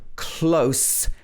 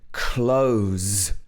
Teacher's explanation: the first one has s at the end s sound and the second one has z at the end